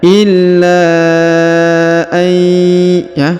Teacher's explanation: Huruf nun sukun bertemu dengan ya bertasdid, maka kita tahan dan kita tekan ya.